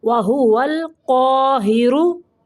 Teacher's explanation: را کے اوپر پیش ہے تو را کو موٹا پڑھیں گے